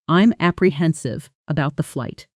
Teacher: apprehensive about almost merges into one flowing unit